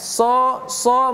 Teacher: So kita menyebutkan sho, sho tapi tengah dan di pangkal lidah kita kita naikkan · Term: huruf shad